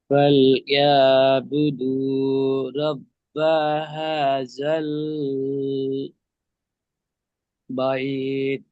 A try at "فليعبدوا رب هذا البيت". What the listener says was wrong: জাল এমন বলবেন না, হা জাল স্পিড বলবেন, ঠিক আছে? হা টান দেবেন, জাল বাইত।